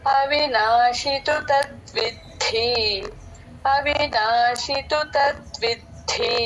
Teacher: తద్విద్ధి అన్న లాస్ట్ లో ధ మహాప్రాణం